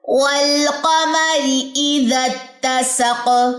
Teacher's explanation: قاف کی جو زبر ہے وہ ڈراپ ہو جائے گی اور اس پہ جزم آ جائے گی، اور جو سین کی زبر سے سپورٹ لے گا سق قلقلہ ہو جائے گا۔